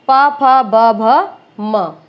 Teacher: उच्चारण के समय क्या होगा, दोनों ओठ आपस में स्पर्श करते हैं, प फ ब भ म, ये भी ओष्ठ है क्योंकि ये आपस में स्पर्श करते हैं।